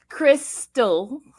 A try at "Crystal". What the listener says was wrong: Well, when you do it like that, of course, you exaggerated the S.